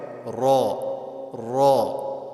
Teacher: اس کو موٹا کر کے پڑھیں گے, خوب پر کر کے اس کو پڑھا جائے گا